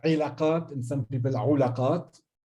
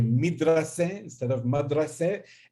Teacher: So the word alaqat, which means relationships or relations, was by some people pronounced ilaqat and some people ulaqat. And we do have e, u, a alternations in the dialects.